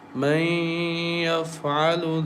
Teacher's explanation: So we merge Nun Sakin into Ya and recite with nasal sound with Gunna for 2 counts